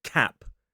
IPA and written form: kæp (cap)